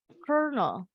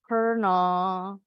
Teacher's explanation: L-nya hilang nih, berubah jadi R.